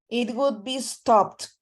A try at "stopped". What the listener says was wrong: Exactly, stopped with a T, okay?